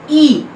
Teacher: ये भी हमारा फ्रंट वोवल है, between half close and half open